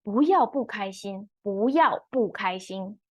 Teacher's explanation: I pronounce the 不 character with different tone. 不要 second tone, 不开心 fourth tone. · first 不 is pronounced as second tone because the 要 is fourth tone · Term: tonal modification